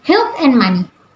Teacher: the glottal fricative and the bilabial nasal have switched positions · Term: metathesis